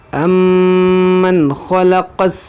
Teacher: नून साकिन के बाद हुरूफ़े हल्क़िया में से ख़ा है, तो यहाँ पर इज़हार होगा, यानी यहाँ पर गुन्ना नहीं होगा · मीम मुशद्दद है, इसमें गुन्ना करेंगे